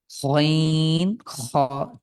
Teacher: আর গইন কণ্ঠের একদম শেষ ভাগ থেকে গইন খ। ঠিক গড়গড়ানি যে ভাব আছে আমরা সকালে উঠে কুলকুল কুলু যখন কুলকুচি করি ঠিক ওই রকমই গইন খ।